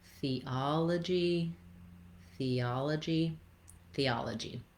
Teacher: I'm moving from the E to the ah. I might have a little bit of a y sound in there, theology. There's no, we're not going to see the glide in the IPA, and you don't need to intentionally put that y in there. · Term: gliding sound